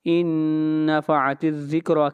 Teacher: نون ساکن ہے، اس کے بعد یا میم واو نون میں سے نون آ رہا ہے، یہاں پر ادغام کریں گے غنہ کے ساتھ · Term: ادغام مع الغنہ